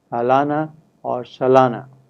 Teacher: the first syllable has a reduced vowel in fast speech so you can hear the syllable at least shorter in duration